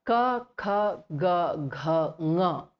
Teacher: these 5 letters are called kantha because they are pronounced from the kantha or from the throat region